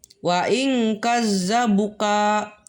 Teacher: Di sini ada ikhfa hakiki, yaitu nun mati bertemu dengan huruf qaf. Nah, ini dibacanya samar.